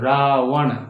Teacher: व में होंठ नहीं सटते हैं